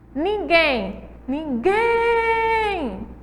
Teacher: O gen é a sílaba mais forte.